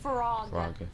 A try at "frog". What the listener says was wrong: No, see, you're saying it wrong. You're saying flog. You got to say frog. No, there's frog. No W. You're saying flog. You got to say frog. Frog.